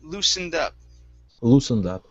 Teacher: Now the S in this word is going to be an unvoiced S.